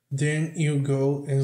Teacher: O D aqui não é pronunciado. Isso aqui, forma quase que uma palavra só, né?